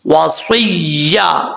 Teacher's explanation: وصیہ، یا کے اوپر شد ہے، وصیہ، صاد حروف مستعلیہ میں سے پر پڑھا جائے گا، واؤ کو پڑھتے وقت ہونٹ گول کریں گے